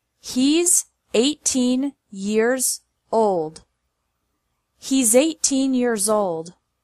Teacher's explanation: this time with apostrophe s being pronounced as Z